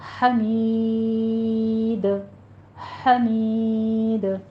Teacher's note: حمید میں ہا وسط حلق سے ادا کریں گے · اور مید جب آپ نے یہ یا مدہ کے بعد دال کے اوپر وقف کرنے لگے ہیں تو وقفے حذف ہو جائے گا. یہاں پہ دال ساکن ہونے کی وجہ سے دال پر قلقلہ پیدا ہوتا ہے